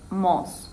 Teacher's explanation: the girl also didn't pronounce the diphthong O, because in Japanese they use just pure vowels